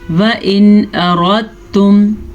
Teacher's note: را کو پر پڑھیں گے کیونکہ را پہ زبر ہے. ایک اہم بات، اب بعض لوگ پڑھتے ہیں یہاں پہ اردتم، یہ غلط ہے. · وَإِنْ أَرَدْتُمْ، نون ساکن کے بعد حمزہ آیا ہے جو کہ حروف ہلکی میں سے ہے، تو ہم نون ساکن کو ظاہر کر کے بغیر غننے کے پڑھیں گے، اسے اظہار کہتے ہیں. وَإِنْ أَرَدْتُمْ، را کو پر پڑھیں گے کیونکہ را پہ زبر ہے.